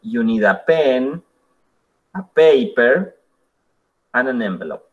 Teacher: Y así todos los elementos que ustedes tengan van hacia arriba y en el último tienen un tono hacia abajo.